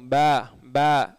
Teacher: பா உதட்டை அணைச்சி சொல்லுங்கள் வந்துடும், பே பே வந்துடும், சரிங்களா?